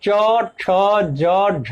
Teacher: इनमें से चवर्ग के अंतर्गत आने वाले च, छ, ज, झ को स्पर्श संघर्षी कहा गया है, क्योंकि इनके उच्चारण में स्पर्श के साथ साथ हल्का घर्षण भी होता है